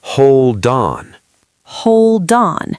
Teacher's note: that D becomes the start of the next word.